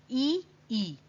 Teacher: जब आप ई या ई बोलते हैं ना, तो आपकी जो जीभ है वो थोड़ी सी सीधी है और ऊपर की तरफ लग रही है थोड़ा सा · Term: तालव्य ध्वनियां